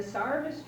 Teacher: if a word had an E-R in it, the Elizabethans almost always pronounced it like an A-R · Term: Elizabethan pronunciations